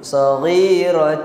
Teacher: Masukkan dengung kita tu ke huruf selepasnya. Huruf waw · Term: idgham